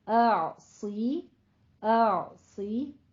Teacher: पहले आ की आवाज आएगी फिर आइन, ठीक है। असी और आइन पर कलकला भी नहीं करना, नहीं कहना।